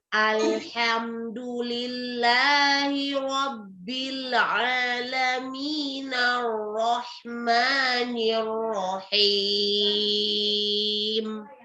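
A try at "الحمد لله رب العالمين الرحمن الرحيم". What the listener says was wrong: Oke, barakallahu fiik. Ini alhamdulillah sudah lebih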